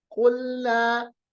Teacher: قلنا, قاف کو بھی پڑھیے گا, قلنا قاف سے, قاف کا مخرج جو میں نے آپ کو بتایا, زبان کی جڑ کو اوپر کے جو سافٹ پلیٹ ہے اس کے ساتھ ملائیں گے